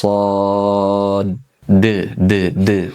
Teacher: huruf sod di ujungnya ada huruf dal yang mana punya sifat namanya qalqalah